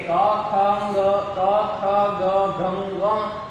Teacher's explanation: આ બધા વર્ણો જે છે તે કંઠમાંથી એટલે કે ગળામાંથી બોલવામાં આવે છે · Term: કુવર્ગ